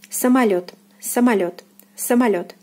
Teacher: So O is unstressed here and is pronounced as A.